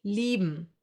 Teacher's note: I-E. I-E will be pronounced like a long, slow E, like for example in cheese.